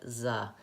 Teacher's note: if your tongue is too far back and the air is still flowing, it'll sound like za. So either a D or a Z substitution for that voice TH.